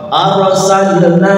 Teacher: huruf ro dibaca tebal ro sukun sebelumnya ada fathah